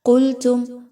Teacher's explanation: قاف کو موٹا کر کے پڑھیے، قاف موٹا حرف ہے، اس کو پر پڑھا جائے گا۔ میم ساکن کے بعد یا کا حرف ہے، یہاں پر کسی طرح کا غنہ نہیں کرنا۔